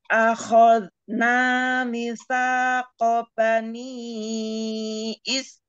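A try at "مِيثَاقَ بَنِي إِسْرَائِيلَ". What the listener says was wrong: Soalnya tadi kurang panjang mi-nya. Mi-nya panjang, ada ya sukun. Mitsaqa. Minya matobi'i.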